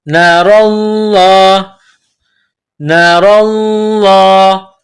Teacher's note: لفظ اللہ کے نام سے پہلے زبر ہے تو لفظ اللہ کے نام کو موٹا کرنا ہے.